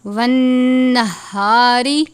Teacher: یہ گول ہا ہے جس کو ہم حلق کے آخر سے ادا کرتے ہیں